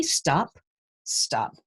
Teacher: that second sound in stop loses its push of air because it's the second sound in a blend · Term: de aspiration